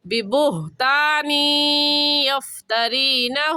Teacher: ہا کا مخرج ہے کہ حلق کا آخر جو سینے کی طرف ہے وہاں سے ہا نکلتا ہے، اس کو واضح اور صاف کر کے پڑھیں گے.